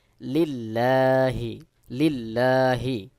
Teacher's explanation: এখানে জের রয়েছে অবশ্যই এখানে বারিক বা পাতলা করে পড়বো তাহলে সহি উচ্চারণ হবে লিল্লাহি লিল্লাহি র বা জবর রব্বা লাম